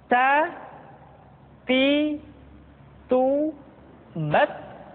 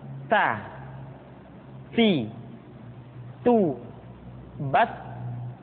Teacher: huruf ta ketika diucapkan terdengar ada nafas yang mengalir atau dalam ilmu tajwid disebut dengan sifat alhamas perhatikan ta ti